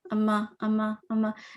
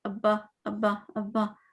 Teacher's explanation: میم میں ہم بولیں تو آپ کے لپس زور سے نہیں ٹچ ہو رہے، اما اما اما، جبکہ بعد میں بولیں ابا ابا ابا، ابا میں زیادہ ایریا کور ہو رہا ہے. دیکھیں یہ سب دو میں بتاتی ہوں، یہ لپس ہیں اور یہ میم ہو گیا سپوز، یہ با.